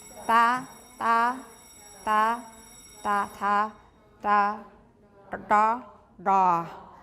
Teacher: starting from a more forward dental T all the way back to a very back retroflex T